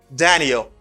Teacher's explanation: It's a falling intonation. Why? It's because I lower my voice at the end of this.